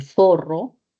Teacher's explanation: la Z, la Z de zorro interdental, sorda fricativa